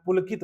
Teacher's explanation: पुलकित की में जोर दे रहे हैं।